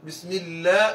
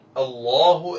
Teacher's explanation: ലാമിനും റായിനും രണ്ടു സ്വരങ്ങളുണ്ട്. അല്ല ബിസ്മില്ല എന്ന് പറയുന്ന നേർത്ത സ്വരവും അള്ളാഹു എന്ന് പറയുന്ന വണ്ണിച്ച സ്വരവും ഉണ്ട്.